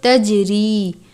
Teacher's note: تجری، جیم پر قلقلہ کرتے ہیں